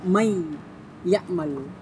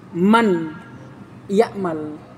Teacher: Makanya nun sukun dileburkan, dimasukkan ke huruf ya. Untuk memberikan tanda masuknya nun sukun kepada ya, diberikan tasydid, bahwa ya di sini itu gabungan antara nun dengan ya itu sendiri. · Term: idgham